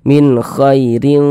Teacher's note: Dibaca tipis maka tipiskan huruf r-nya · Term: tarkik